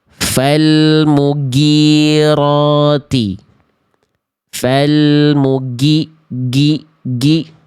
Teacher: Kurang mengalir suaranya itu contohnya teman-teman masih melafalkan huruf ghain diserupakan plek ketiplek seperti huruf G alfabet.